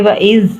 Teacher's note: اعوذ باللہ من الشیطان الرجیم بسم اللہ الرحمن الرحیم وَإِذْ قَالَ رَبُّكَ لِلْمَلَائِكَةِ، جیسے کہ وَإِذْ ذال کو ہم نے سختی سے نہیں پڑھنا، دونوں دانتوں کے سینٹر میں زبان رکھ کر ذال کو پڑھنا ہے کہ ہم نے اس کی ز کی آواز نہیں نکالنی اور قاف کو موٹا کرنا ہے۔